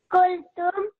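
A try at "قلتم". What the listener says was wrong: The qaf. Can we try that from our throat? Qultum.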